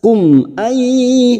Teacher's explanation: nun sukun bertemu ya idgham biguna, siap masuk ke huruf ya dan ditahan selama 3 harokat